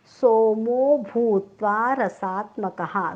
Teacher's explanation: सोमो भूत्वा, चारही अक्षर दीर्घ आहेत हं. सोमो भूत्वा, त्वा म्हणताना तोंड पूर्ण उघडायचं आहे.